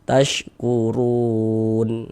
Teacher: Huruf ro memiliki harakat dommah dibaca tabkhim. Dibaca tebal.